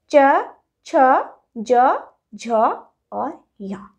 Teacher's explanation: चवर्ग का उच्चारण स्थान है तालु